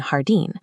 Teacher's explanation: In Spanish, j always makes a strong breathy h sound from the back of the throat as in jardín.